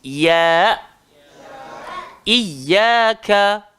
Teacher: Jadi ya ini keluar dekat tengah-tengah lidah, langgar langit atas. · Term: huruf ya